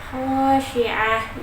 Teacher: ada tak marbutah lagi, dibaca ha karena berada di akhir kalimat.